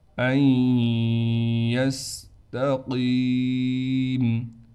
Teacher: ان یستقیم، نون کو ادغام کے قاعدے سے ختم کریں گے، حمزہ کو ڈائریکٹ یا سے ملائیں گے غنہ کے ساتھ، تا کو بالکل باریک پڑھیں گے، قاف کے بعد یا ہونے کی وجہ سے قاف کو ایک الف کی مقدار کھینچیں گے۔